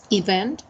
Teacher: It has 2 syllables, and the stressed one is the second one.